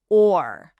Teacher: It has to be open, it has to be available, but also reserved a little bit, right? It has that dark quality of a back vowel sound.